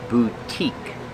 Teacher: It's the long U, boo, and the long E, boutique.